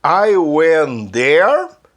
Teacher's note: I went there, porque eu não falei o T, porque eu juntei com there